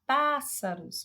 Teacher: pássaros, você vê que o pá se destaca mais do que as outras sílabas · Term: sílaba tônica